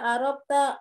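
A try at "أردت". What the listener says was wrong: Dal Bu, ba dal. Arod.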